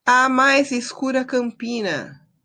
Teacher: só vai contar a sílaba poética até o pi, porque é a sílaba tônica da palavra campina. Então o na não conta.